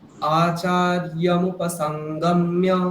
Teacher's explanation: এখানে মু হচ্ছে হ্রস্ব, কিন্তু আপনি বলছেন দীর্ঘ